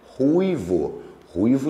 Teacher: o u faz o papel da vogal, porque ele é pronunciado mais forte, o i faz o papel da semivogal, então esse ditongo é decrescente